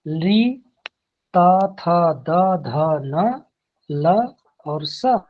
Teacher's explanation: त थ द ध न ल और स, इतने वर्णों का उच्चारण स्थान दंत होती हैं।